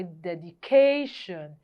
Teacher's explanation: the ca part of dedication is stressed